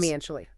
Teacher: Listen closely to the stress on the second syllable of financially.